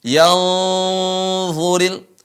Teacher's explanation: Huruf nun bertemu dengan dha, menyamarkan suara nun, mendengungkan suara nun ke tempat makhraj dha.